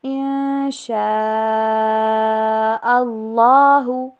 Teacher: ان شاء اللہ میں نون ساکن کے بعد شین آ رہا ہے، اس وجہ سے یہاں پہ اخفا ہوگا